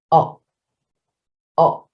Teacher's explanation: the tongue is floating but it's towards the bottom